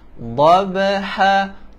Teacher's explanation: huruf dhad, tepi lidah disentuh di atas gigi geraham kiri